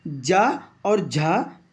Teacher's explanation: जा और झा ये आपके तालू से बोले जाते हैं